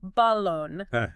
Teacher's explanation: putting the emphasis on that last syllable